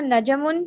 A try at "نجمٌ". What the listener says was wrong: Najmun, not najam. Najmun. Jim is silent. Najmun.